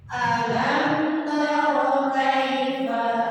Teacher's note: Cara membaca idgham syafawi itu mimnya harus tampak jelas. Jadi jelaskan huruf mimnya, ya. Dan jangan digunakan, tidak ditahan, tidak digunakan.